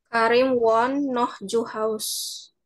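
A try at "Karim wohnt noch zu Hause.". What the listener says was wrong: No, Cu. Ada E, jangan lupa. Cu. Cu Hause. Ya, benar. Ya, jadi dibaca itu huruf E-nya. Hause.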